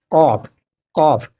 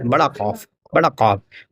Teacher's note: زبان کی جڑ اور تالو کے اوپر والے نرم حصے سے لگ کر قاف ادا ہوتا ہے